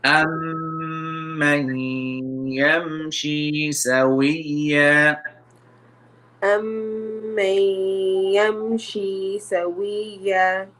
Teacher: The meme has a shadda. We need to make nasal sound here. And then noon sakin followed by ya, merging, idgham.